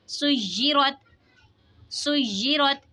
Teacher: रा पे ज़बर है, रा को मोटा पढ़ेंगे